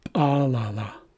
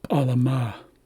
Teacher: And again, here we see a shift in the accent. So the accent is at the end of the word, which tells us to emphasize the last syllable.